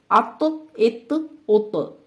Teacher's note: اب آپ دیکھیں تو کو ہم موٹا بھی پڑھ رہے ہیں اور اس میں بھی قلقلہ کی صفت پائی جاتی ہے کہ جب ہم آخر میں رک رہے ہیں اس کو ساکن کر رہے ہیں تو ہم اس کے مخرج کو ہلا کر پڑھ رہے ہیں. جیسے ہم منہ بند نہیں کرتے بلکہ دوبارہ کھول لیتے ہیں.